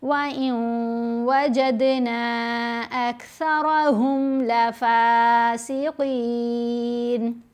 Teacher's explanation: ادغام کرتے ہوئے ہم نے نون کی آواز کو واو کے اندر ہی مرج کرنا ہے.